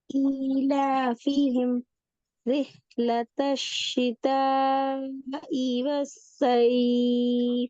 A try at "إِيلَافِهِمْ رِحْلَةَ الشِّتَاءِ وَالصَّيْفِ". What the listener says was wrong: ஆஹா ஆஹா, அந்த ஈய நீடக்கூடாதே. رحلة الشتاء والصيف. இ இ இ ஈ என்று போகுது.